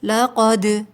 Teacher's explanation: دال حروف قلقلہ ہے، اور جب یہ ساکن ہوتا ہے تو آواز پلٹ کر آتی ہے نرمی کے ساتھ، لقد، ٹھیک ہے، سختی نہیں کریں گے۔